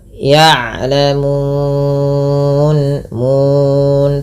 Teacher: mun, panjangkan ya 2 harakat, 4 atau 6 harakat, yang dimana kita boleh memilih. Karena di sini ada namanya mad arid lisukun, mad yang terjadi karena adanya sukun arid, yang disebabkan lisukun arid.